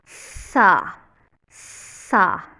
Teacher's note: फिर सीन की आवाज़ है, उसमें सीटी की आवाज़ आती है और ऊपर वाले दांत और नीचे वाले दांत आपस में जोड़ के और पीछे ज़ुबान लगेगी, सा, सा। और सौद में जो है वो हम आवाज़ को भारी करेंगे, सौ।